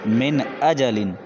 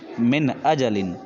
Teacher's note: یہاں پہ نون ساکن ہے، اس کے بعد حمزہ ہے جو کہ حروف حلقی میں سے ہے، اس لیے ہم صاف صاف پڑھ رہے ہیں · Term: اظہار